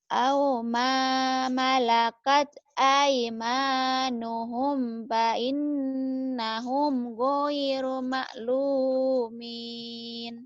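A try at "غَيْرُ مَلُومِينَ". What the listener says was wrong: Jangan ma, jangan ditekan. Goiru malu, datar. Ngalir. Goiru malu. Goir.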